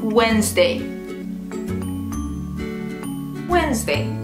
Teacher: In Wednesday, the D is silent. So just don't say it at all.